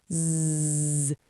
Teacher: The Z sound is voiced. That means your throat vibrates. Put your hand on your throat and feel it.